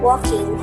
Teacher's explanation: pronouncing words ending in ing with a velar nasal instead of alveolar nasal